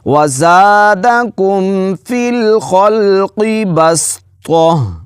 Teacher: تو کو موٹا کر کے پڑھنا ہے، سین کو باریک پڑھیں گے، بس ایسے پڑھیں گے، اور یہاں پر گول تا کو ہا پڑھنا ہے۔